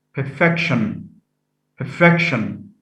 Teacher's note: stress is shifted from the first syllable to the second